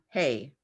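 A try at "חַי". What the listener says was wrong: Chai. That's a solid line, not dots.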